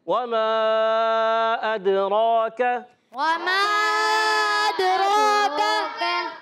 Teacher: तो रा को पुर पढ़ेंगे और काफ को बारीक रखेंगे।